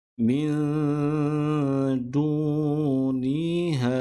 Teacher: Du di sini perlu dipanjangkan dengan kadar 2 harakat kerana dal berbaris hadapan, selepasnya terdapat huruf waw dan di atas huruf waw tidak ada sebarang tanda ataupun sebarang simbol, maka hukumnya kena dipanjangkan dengan kadar 2 harakat.